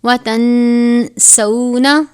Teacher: نون ساکن کے بعد سین ہے، یہاں پر غنہ کریں گے، حروف اخفا میں سے یہ سین ہے.